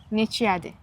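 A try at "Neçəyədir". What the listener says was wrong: Exactly.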